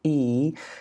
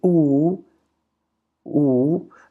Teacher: when I say the sound e, now look at my lips, see? Flat. But when I say ooh, ooh, the lips are round.